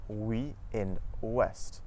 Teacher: OU at the start of the syllable makes a W sound, just like in the words woman and west.